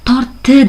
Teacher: Oldingi mana bu t harfi keyingi d harfini o'ziga moslashtirib oladi. Talaffuzda bu, lekin yozuvda biz d deb ifodalaymiz. · tortdi deb yozsak ham, lekin talaffuzimizda mana bu d harfini biz t deb talaffuz qilamiz. Mana shu assimilyatsiya hisoblanadi.